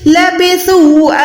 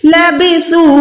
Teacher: لبثو، یعنی اس الف کو ہم نے چھوڑ دینا ہے اور سا واو پیش سو کو آپ نے 2 سیکنڈ لمبا کرنا ہے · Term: چھوٹی مد